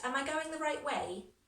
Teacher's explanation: can you hear how my voice goes up? Because I'm not sure.